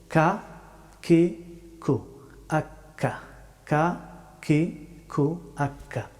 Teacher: কাফ হরফটি উচ্চারিত হয় জিহ্বার শেষের অংশ থেকে তবে একটু সামনের দিকে আগ বাড়িয়ে